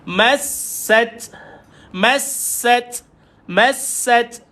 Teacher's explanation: Dan ta ini tuan-tuan ada sifat hamas, keluar angin pada dia.